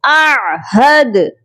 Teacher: یہاں حمزہ ہے جو کہ عین کے ساتھ ملا کر پڑھا جائے گا، اور حمزہ اور عین کی آواز بالکل کلیئر ہونی چاہیے، سیپریٹ آنی چاہیے